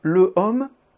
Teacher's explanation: Mais en français, comme en espagnol, le H n'est pas prononcé.